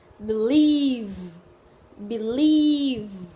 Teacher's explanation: Tiếp theo chúng ta chuyển sang câu thứ hai, đó là âm thứ hai, âm v. Đây là âm hữu thanh, ta liên hệ với chữ v ở tiếng Việt. Tuy nhiên là răng ta không nhấc lên khỏi môi